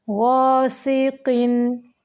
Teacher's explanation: यहाँ पे तनवीन को ज़्यादा लंबा नहीं करेंगे, सिर्फ ज़ाहिर करेंगे क्योंकि जब नून साकिन या तनवीन के बाद हरूफ हल्की में से हमज़ा आ गया है यानी हरूफ हल्की में से कोई भी हरफ आ जाए वहाँ पे इजहार होता है यानी सिर्फ नून को ज़ाहिर करना या तनवीन को ज़ाहिर करना होता है।